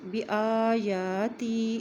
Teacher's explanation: یا کے اوپر بھی کھڑی زبر ہے اور الف کے اوپر بھی کھڑی زبر ہے اس لیے بآیاتی ایک حرکت لمبا پڑھیں گے